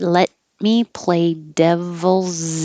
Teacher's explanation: you're not going to release the T, just hold it.